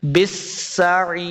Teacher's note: با کو سین کے ساتھ لائیں گے، سین پہ سیٹی کی آواز آئے گی، بالسعیر، عین زی یاعی، یہ یا مدہ ہے، اس کو 2 حرکات لمبا کریں گے اور آخر پہ ہم نے وقف کرنا ہے، بالسعیر۔